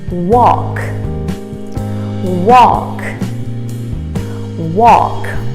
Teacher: so the a sounds like an o and the l is silent walk walk just like a restaurant you might have heard of